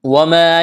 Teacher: الف مدہ ہے، ایک الف کے برابر کھینچنا ہے